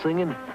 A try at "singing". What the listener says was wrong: The word is singing. Ing. Singing. Well, for one, you're always dropping your G's.